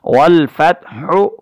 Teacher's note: تا پہ قلقلہ لے آئے تب بھی غلط ہو جائے گا، اس تا کو ہم نے باریک پڑھنا ہے، اور ہا کی ادائیگی میں جو ہے وہ حلق سے اس کی ادائیگی کرنی ہے ، والفتح، حالت وقف میں ہا ساکن ہو جائے گی، والفتح،